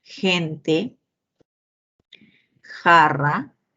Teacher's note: El fricativo velar sordo